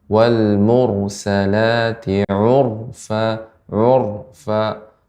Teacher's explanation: Ra yang sukun sebelumnya dhammah, sebelumnya huruf yang berharakat dhammah, maka dibaca dengan tebal ra-nya.